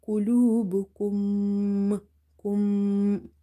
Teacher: So after meme sakin, if you see another meme or simple, if you see the shadda on top of meme, you will do nasalization or ghunna in the sound of meme. So here you have to say qulubukum, kum.